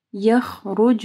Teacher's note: رو کو موٹا پڑھنا ہے، خو کو بھی موٹا پڑھنا ہے